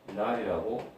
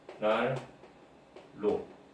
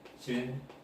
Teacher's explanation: 니은이나 리을 전부 다 이몸소리입니다. 이몸소리인데 둘 다 울림소리입니다. 비음을 내고 난 다음에 유음을 내든가 유음을 내고 난 다음에 비음을 내게 될 때는 발음하기가 불편하잖아요.